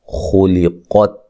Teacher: خا کو موٹا، قاف کو موٹا، تا کو ہلا کے نہیں پڑھنا